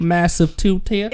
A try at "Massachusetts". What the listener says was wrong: It's supposed to say chew, and you're saying massive two tits.